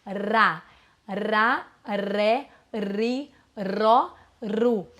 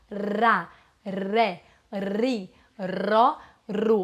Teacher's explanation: eu tô vibrando a ponta da língua eu tô elevando também atrás dos meus dentes